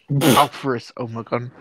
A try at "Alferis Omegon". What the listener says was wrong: Alferis Omegon. You gotta extend the vowels. No, it's not.